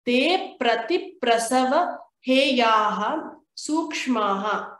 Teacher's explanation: We need to get three of these consonants together. And keep a stress at every pra you see here